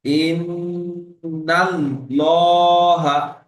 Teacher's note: আল্লাহর নাম পুর করে পড়তে হবে, অর্থাৎ ঠোঁট গোল করে পুর করে পড়তে হবে।